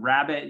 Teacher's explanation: in rabbit, you have a kind of schwa sound, sometimes called a barred I. Sometimes people call it a schwa.